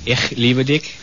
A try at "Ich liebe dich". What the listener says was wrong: Ich liebe dich. The CH is a little harsh.